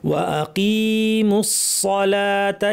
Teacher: মিম গিয়ে সরাসরি সদকে ধরবে, মিমটা পাতলা থাকবে, সদ ভারী হবে